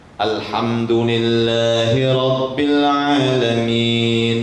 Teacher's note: mad aslinya dua harokat. Jangan kurang, jangan lebih, jangan tak seragam. Harus seragam dan sama panjangnya.